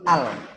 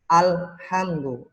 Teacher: Bukan ale, tapi al. Lamnya harus jelas.